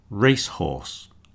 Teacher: These are compound nouns and you'll see that the stress goes on the first word.